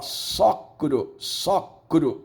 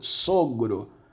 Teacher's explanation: o Q se transforma em G, sonorização